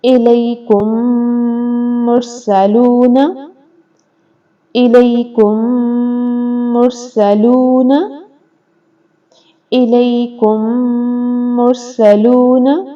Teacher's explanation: الیکم مرسلون کے کاف پیش میم کم ہے، میم ساکن ہے اور اس کے بعد میم آ گیا تو اس کو غنے کے ساتھ ہم ادا کریں گے۔ یہ ہے ادغام شفوی کی مثال ہے الیکم مرسلون، الیکم مرسلون، الیکم مرسلون۔